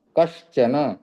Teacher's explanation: कस plus चन, कश्चन, तो यहाँ पर हलंत स का जो है तालव्य श बनता है।